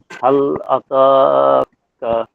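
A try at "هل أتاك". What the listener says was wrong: এখানে তাটা পরিপূর্ণ হচ্ছে না, অনেকটা ত এর মতো হচ্ছে, হাল আতাকা এরকম হচ্ছে, হবে না? তাটা স্পষ্ট করেন, হাল আতাকা।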